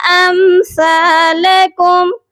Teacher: سا کو نرمی سے پڑھا جائے گا، زبان کی نوک اوپر والے دانتوں کے کنارے سے سافٹلی ٹچ کر کے سا کی ادائیگی کی جاتی ہے